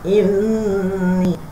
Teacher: Inni dengung 2 harakat, panjang tu 4 harakat. Inni 2 harakat, dengung mesti 2 harakat. Ini ni tu sebab ada panjang macam ini, maka dipanjanglah 4 harakat.